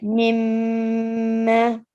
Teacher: You have to stay on the meme for 2 seconds, and then after it, you prolong it as well, because there is an alif. So alif madya here as well. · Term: ghunnah